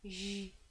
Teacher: So it's very soft, I guess, and not kind of that harsh Dutch G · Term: soft G